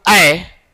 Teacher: जब आय बोलते हैं हम लोग आय, तो ओठ गोलाकार नहीं होता है। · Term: अवृत्तमुखी